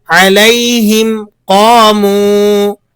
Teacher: وَإِذَا أَظْلَمَ عَلَيْهِمْ قَامُوا، لفظ علیہم قاموا، یہاں دیکھیں میم ساکن کے بعد قوف آ رہی ہے، میم ساکن کے بعد قوف آنے کی وجہ سے یہاں بھی اظہار شفوی ہوگا، غنہ بالکل نہیں ہوگا، میم کو واضح کر کے آپ نے پڑھنا ہے